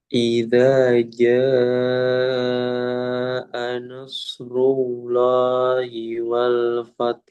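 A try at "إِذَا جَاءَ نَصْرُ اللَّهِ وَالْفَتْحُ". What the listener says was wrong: Nggak ada bunyinya. Fat, fat. ada bunyinya ada pantulannya. Fatah, fatah, fatah.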